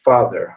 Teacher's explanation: it's also an open sound so if you see a ah i'm opening my mouth quite a bit all right but i'm not rounding it